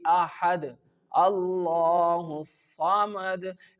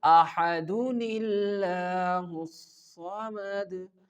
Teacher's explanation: Join the dal sound to the word Allah. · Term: wasl